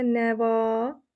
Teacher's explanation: İkinci hecanın saiti uzun tələffüz olunur. Nəva, görürsüz, A uzun tələffüz olunur.